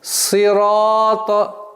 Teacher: буква сад, твердый звук, свистящий звук, си, ра, твердый звук.